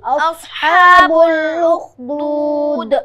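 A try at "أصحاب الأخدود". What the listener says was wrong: لخدود پڑھ رہا ہوں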